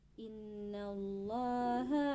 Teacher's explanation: pada Allahu terdapat hukum lam jalalah tarkik karena sebelum lam jalalah terdapat huruf berharakat kasrah